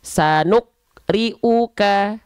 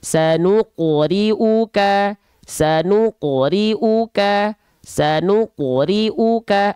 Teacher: artinya adalah pantulan yang kecilkecil atau ringan ya oke Nah maka ketika teman-teman melafalkan huruf q di sini pantulkanlah dia jangan cuman dibaca begini sukauka Itu tetot Kenapa karenanya tidak dipantulkan · Karena qafnya tidak dipantulkan. Harusnya dipantulkan. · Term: Qalqalah sugro, qalqalah sughra